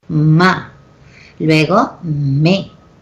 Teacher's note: sonidos que se pronuncian juntando los labios superiores e inferiores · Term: bilabiales